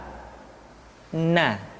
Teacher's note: Caranya menyentuhkan ujung lidah kita di antara posisi ro dengan la. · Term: huruf na